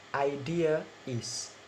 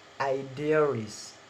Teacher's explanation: Idea, when the idea is added is after the word idea, so in normal sounds is idea is, but in insertion it become idearies. So added r between the word idea and is. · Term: intrusive or linking R